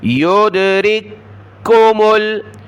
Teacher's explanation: پہلا کاف دیکھیں ساکن ہے، دوسرا مشدد ہے تو ساکن کو چھوڑ دیں گے. را کو کاف مشدد کے ساتھ ملایا. یدرککمل، رک کو کاف کو سخت کیا.